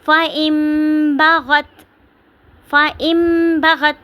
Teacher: نون کو میم میں بدل دینا ہے